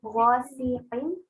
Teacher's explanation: غا تھوڑا موٹا ہے, پھر سین جو ہے وہ ہلکا ہے, اور قاف وہ تھوڑا پھر موٹا ہے